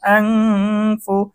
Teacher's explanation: ইকফার গুন্না, নুন সাকিনের পরে ইকফার হরফ ফা এসেছে, গুন্না সহ স্পষ্ট করতে হবে।